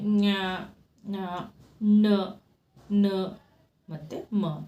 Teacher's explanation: ಮೂಗಿನ ಸಹಾಯದಿಂದ ಉಚ್ಚರಿಸಲಾಗುವ ವ್ಯಂಜನಗಳು ಅನುನಾಸಿಕಗಳು